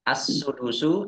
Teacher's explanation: alif lam syamsiyah karena tidak dibaca langsung masuk ke huruf berikutnya yaitu Sin